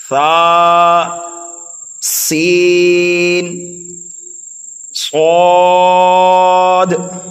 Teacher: ثا کو ہم نرمی کے ساتھ پڑھیں گے، اور سین کو سختی کے ساتھ پڑھیں گے، اور صاد کو موٹا کر کے سینٹی کی آواز نکال کر پڑھیں گے۔ تینوں حرفوں میں فرق پیدا ہو گیا۔